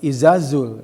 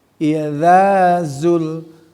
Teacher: Idza, panjang za-nya. Ya, ada fathah bertemu sama alif.